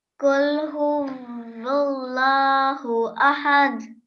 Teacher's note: remember this qaf sound, thick and heavy sounding letter